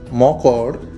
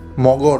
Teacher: ক এ কিন্তু ভাইব্রেশন হচ্ছে না। তাই ক হচ্ছে অঘোষ ধ্বনি। আর ঘ এ ভাইব্রেশন হয় সেজন্য গ হচ্ছে ঘোষ ধ্বনি। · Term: ঘোষীভবন